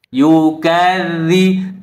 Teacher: ujung lidak ada di ujugisri atas dza dza dza begitu ya yukadzi tidak boleh terlalu berhembus anginnya karena dia tidak mempunyai sifat Hamas dia punyai sifat jahar dan